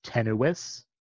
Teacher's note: Next, let's look at the dental voiceless stop, t.